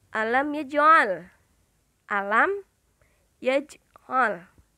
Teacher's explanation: Suaranya terang dan bibir dengan posisi mulut tertutup. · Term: idhar syafawi